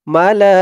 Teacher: এখানে 4 আলিফ টান হবে মধ্যে মুত্তাসিল